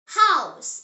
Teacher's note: In German, ha is always breathed out. It is never silent like in some English words.